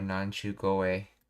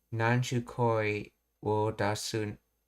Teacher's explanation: The flow of the speech causes the K of koi to be voiced into goe.